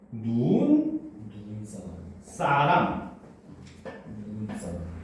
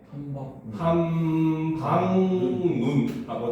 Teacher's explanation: 그래서 같은 문이라도 합성이나 파색을 했을 때 첫 음절에 위치할 때만 길게 발음이 되고 둘째 이하의 음절에서는 짧게 발음한다는 거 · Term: 장음